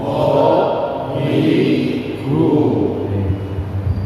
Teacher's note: Jadi go suaranya di tenggorokan bagian atas